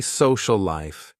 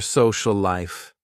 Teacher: but we don't say social life we say social life because we just connect them and we make one word out of two words when we talk